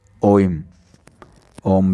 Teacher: प्लुत स्वर जिसमें ह्रस्व की अपेक्षा लगभग 3 गुना समय लगे